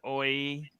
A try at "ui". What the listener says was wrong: It's not oi, it's ui.